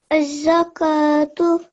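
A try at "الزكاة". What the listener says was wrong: Very nice.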